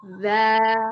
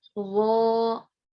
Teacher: Kalau za itu huruf istifal dan infitah, tipis. Za. Tapi kalau wo punya sifatnya itbaq dengan isti'la, jadi tebel, harus naik pangkal lidah, harus menyempitkan mulut.